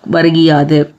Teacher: குற்றியல் உகரத்தில் உள்ள உகரம் இகரமாக மாறும் அந்த இகரம் தனக்குரிய ஒரு மாத்திரை அளவிலிருந்து அரை மாத்திரை அளாக குறைந்து ஒலிக்கும் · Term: குற்றியல் இகரம்